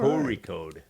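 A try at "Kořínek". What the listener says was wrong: Yeah, it's not an R. It's a It's like a deep gut roll sound.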